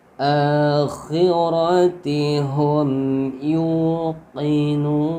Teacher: a-nya panjang ya, alif kecil, dua harakat